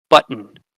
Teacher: the nucleus of the second syllable is an N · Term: syllabic